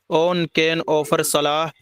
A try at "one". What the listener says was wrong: ऑन नहीं, ऑन नहीं, वन वन।